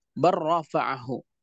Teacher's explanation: Di mana lamnya? Lamnya masuk ke dalam ra.